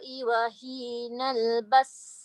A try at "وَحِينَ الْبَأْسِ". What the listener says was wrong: Okay, sebelum masuk sin, tahan dulu sebab dia ada hamzah kat situ. Wahinal ba's. Dia bukan bas. Dia kena tahan dulu ba tu sebab hamzah ni bersifat menahan. Lepas tu baru lepaskan sin. Wahinal ba's.